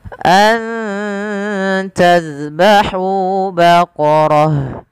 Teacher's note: izhar syafawi dijelaskan suara mimnya dan tidak ada penahanan